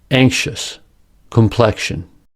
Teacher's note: The letter X in these words is pronounced with two sounds, ksh.